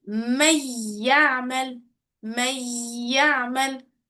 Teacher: We cancel the noon and we take the letter meem and the letter ya in one. We will We make it like idgham.